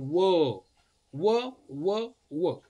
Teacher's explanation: दंत आणि ओठ यांचा उपयोग करून जे वर्ण उच्चारला जातो तो एकमेव आहे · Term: दंत ओष्ठे